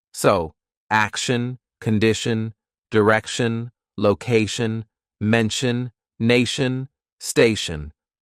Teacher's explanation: Now move to the pronunciation of words ending with t i o n s i o n c i a n and t i a n and all of those it's pronounced shun at the end. Shun.